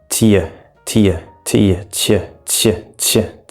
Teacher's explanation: If you try to say that really fast, tia, tia, tia, ch, ch, ch, ch, and we end up getting the ch sound. So the t disappears, the y disappears, and we just get ch. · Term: blending